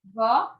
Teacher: eu tenho a palavra vó o som é aberto